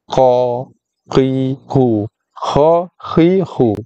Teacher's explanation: ada lebihan suara yang keluar, ada hembusan nafas yang terhembus keluar bila sebut huruf kha · Wa, kha, huruf istilak sama macam qaf. So bila sebut huruf qaf, huruf kha yang sifatnya istilak meninggi, kita angkat kawasan ataupun bahagian pangkal lidah, bahagian lidah paling dalam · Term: lepas nafas